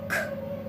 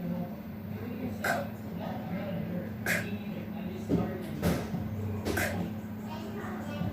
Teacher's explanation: Raise the back of your tongue toward your throat. Next, stop the air with the back of your tongue and then release it with a strong puff. If you make the sounds correctly, you'll hear a burst of air like this.